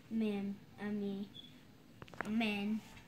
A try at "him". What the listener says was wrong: No, that's M-E-N. Men. Sound it out. H-I-M. H-I-M.